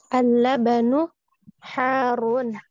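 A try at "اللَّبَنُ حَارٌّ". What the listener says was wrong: Naam, harun. Ahsan li.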